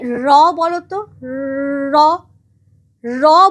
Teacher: আর জীব সেই কাপনটা সরিয়ে তাকে বার করবার চেষ্টা করছে। ফলে এই যে আমাদের জীভটা বারবার কাঁপছে, ভাইব্রেট করছে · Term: কম্পিত ধ্বনি